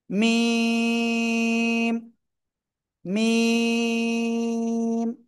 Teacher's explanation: এই দুই ঠোঁটের শুকনো জায়গা থেকে উচ্চারণ হবে এবং চার আলিফ টেনে পড়বো